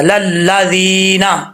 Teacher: لام کو لام سے ملائیں گے، الف بیچ میں گر جائے گا